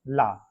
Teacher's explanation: पार्श्विक ला, जब हम ला का उच्चारण करते हैं तो हमारे जीभ के दोनों ओर से वायु स्पर्श करती है।